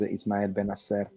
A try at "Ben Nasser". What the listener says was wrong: Ben Nasser. Ben Nasser. It's not one word. It's like Ben Nasser. But it's Ben Nasser.